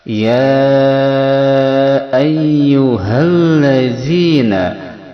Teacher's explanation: Allazi adalah mad asli atau mad tabi'i, panjangnya 2 harakat. Allazi za, makharijul huruf za ada di ujung lisan, dikenakan, ditempelkan pada ujung gigi seri bagian atas.